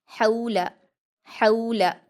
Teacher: लाम पर हरकतें जल्दी पढ़ेंगे, हा को हलक से अदा करेंगे